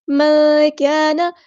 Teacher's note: نون ساکن کی آواز کو ہم یہاں پہ چھپا دیں گے، اخفا ہو رہا ہے. کان، الف مد آ گیا تو یہاں پہ ہم مد اصلی کریں گے.